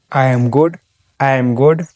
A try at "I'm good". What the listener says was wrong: I'm good. I'm good. See how the am disappears again? The am hides inside.